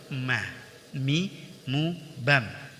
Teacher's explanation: Huruf mim dikeluarkan dari dua bibir, yaitu diucapkan dengan merapatkan kedua bibir.